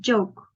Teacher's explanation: It's a voiced consonant. You can feel the vibration on your throat, and it's also affricate, and this is a plateau sound also. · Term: j sound